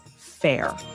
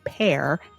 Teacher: the f and the v hindi and punjabi speakers make them sound like a p to the english ear